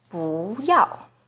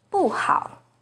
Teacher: 不 is the second rising tone in 不要, but it's the fourth falling tone in 不好.